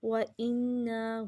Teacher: وَإِنَّا غنہ مد جائز 3 سے 4 الف کے برابر لمبا کریں گے